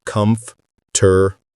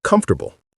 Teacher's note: We say comfortable or comfortable. The or sound disappears completely. The middle gets compressed. It sounds like comfortable.